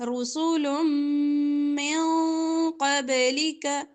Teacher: دو پیش کو میم کے ساتھ ملا کر ادغام کریں گے گننے کے ساتھ